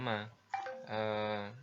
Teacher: Ma ini diucapkan dengan cara merepatkan dua bibir ya. Jadi hampir mirip-mirip dengan ba. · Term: huruf mim